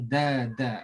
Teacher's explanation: Dal ni makhrajnya berada di hujung lidah di bahagian atas. Dia sifat dal ni lembut dada.